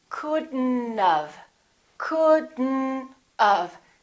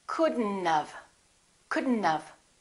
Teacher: We pronounce the D and then we connect the D next to the N and then the O disappears, but the T also disappears.